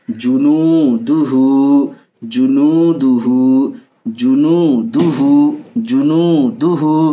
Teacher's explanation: الٹا پیش برابر ہے واو مدہ کے، اس لیے الٹا پیش کو بھی تھوڑا کھینچ کر پڑھیں گے